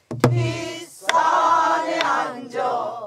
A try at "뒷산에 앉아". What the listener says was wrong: 앉아 아니고 뒷산에 앉아 앉아 앞에 거하고 틀려요 앞에 거하고 음이 틀리니까 똑같이 하지 마요 앞산에 앉아 귀척도 뒷산에 앉아 틀리잖아요 곡조가 시작